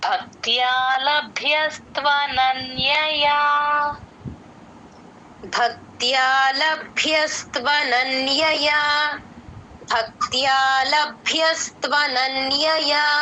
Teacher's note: భ కి మహాప్రాణం ఉంది క కింద త వత్తు య వత్తు భక్త్య య తో ఎండ్ అవ్వాలి